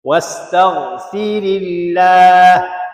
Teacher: Lafzul jalalah sini baca dengan tarqiq, baca nipis juga. Kerana baris sebelumnya kasrah. Zi itu dinipiskan kalimah Allah.